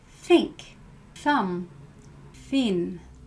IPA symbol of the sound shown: θ